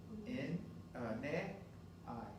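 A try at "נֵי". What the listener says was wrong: Nay, that's an A.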